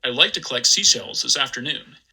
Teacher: my highest f-zero here goes to about 213.